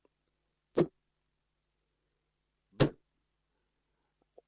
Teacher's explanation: They are all plosives because in the course of producing, we have a complete release of air. P, B. And while P is voiceless, B is voiced.